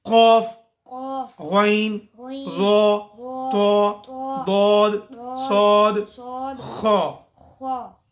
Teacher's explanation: اس کو جو ہے نا وہ موٹا کرنا چاہیے، ان حروف کو پر پڑھنا چاہیے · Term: مستعلیہ letters